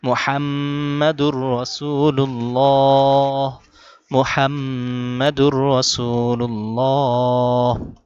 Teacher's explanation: মুহাম্মদ এখানে গুণনা করতে হবে আর হা গলার ভেতর থেকে